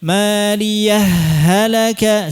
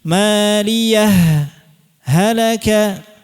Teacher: Idzhar dijelaskan ha-nya, tapi berhenti dulu sejenak. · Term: idhar